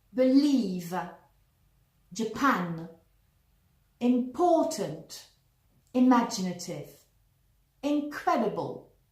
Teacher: now let's see the word stress on the second syllable